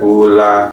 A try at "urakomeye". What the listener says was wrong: No, not la. You gotta. There's like a thick R or deep.